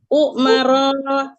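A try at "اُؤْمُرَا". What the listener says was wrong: Up. Up. Domah kan dari mimnya. Ukmu.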